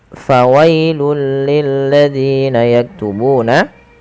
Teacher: Fawailul, ya, awalnya fawailun, karena bertemu dengan huruf lam maka tanwinnya dimasukkan ke huruf lam dan diganti dengan huruf lam. Maka inilah yang kita namakan dengan bacaan idgham.